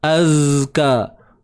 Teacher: Ingat huruf zai saya sebut tadi, bila ada sukun sifat sifat rakhawah yang menjadi kepentingan ketika itu untuk kita menyempurnakan sifat dia, iaitu suara yang mengalir